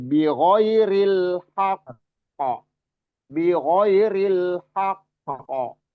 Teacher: seolah-olah ada jeda, cuman bukan narik napas, seolah-olah ada jeda baru memantul besar karena wakof · Jadi di ini kita wakof ya atau berhenti di haqqo. Qaf itu qalqalah ya, punya sifat qalqalah, dan di sini ada tasdid dan kita wakof. Jadi qalqalahnya masuk qalqalah kubro, qalqalah besar ya.